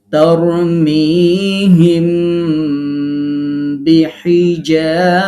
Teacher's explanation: এই যে হিম, আমরা এই যে এরকম করে পড়তেছি, মিম সাকিনটাকে গুন্না সহ গোপন করে পড়তেছি, এটার নাম মিম সাকিনের ইখফা।